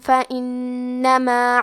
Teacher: نون پہ تشدید ہے تو ہمیں 2 حرف کے برابر نون کو پڑھنا ہے